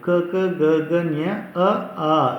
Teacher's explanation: ಸೊ ಇಲ್ಲಿ ಕಂಠ್ಯಾಕ್ಷರಗಳು ಅಂತಂದರೆ ಕಂಠ ಭಾಗದಲ್ಲಿ ಹುಟ್ಟುವಂಥ ಅಕ್ಷರಗಳಿಗೆ ನಾವು ಕಂಠ್ಯಾಕ್ಷರಗಳು ಅಂತ ಕರಿತೀವಿ. ಕಂಠ ಭಾಗ ಅಂದರೆ ಗಂಟಲು.